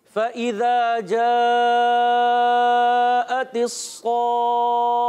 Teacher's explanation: खा के बाद हा करना है और खा पर तशदीद है, इसलिए इसको पकड़ना है तो रुक कर अदा करना है